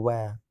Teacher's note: दांत और होठों से मिलाकर व को बोला जाता है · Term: दंत कोष्ठ